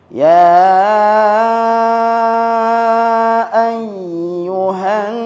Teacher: Alnya enggak dibaca ya, langsung nunnya bertasydid. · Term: al-syamsiyah